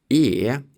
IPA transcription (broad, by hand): eː